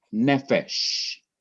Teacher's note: emphasize the syllable before the last syllable, which is ne, the accent mark has to be put on the syllable before the last syllable.